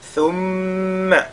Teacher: on fait la lettre al-ghunna sur la lettre mim. Et thum, la lettre tha.